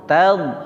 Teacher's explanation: bukan tad, tapi tal yang disentuhkan sisi lidah dengan gigi geraham